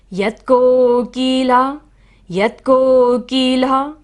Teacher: ला पर विसर्ग है, यहाँ पर हमें सारी सांस को बाहर छोड़ना है